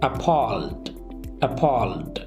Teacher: Stress is on palled. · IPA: /əˈpɔːld/